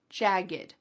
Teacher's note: when you say jagged, there's no puff of air.